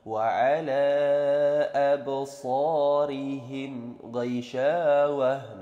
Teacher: Wa ala absarihim ghaishawah. Nah, itu ada mim mati bertemu dengan huruf ghain, maka dia menjadi idhar syafawi lagi. Ghaishawah, jelas dibacanya, tidak samar-samar, tidak mendengung.